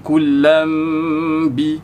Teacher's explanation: kalau kita wasal lah jadi kullam bi, dia ada dengung. Tapi bila kita waqaf dia jadi ya'rifuna kulla.